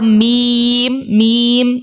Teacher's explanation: जब दोनों होठों का खुश्क वाला हिस्सा आपस में मिले तो मीम निकलता है